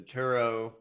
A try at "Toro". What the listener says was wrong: The Toro. Do you see a U in there? Turo.